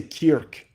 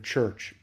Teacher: the k sound hasn't turned into a ch like it did down south